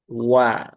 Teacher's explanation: Wala wau itu huruf tipis ya. Ya, huruf ada di bibir ya dengan memonyongkan bibir terlebih dahulu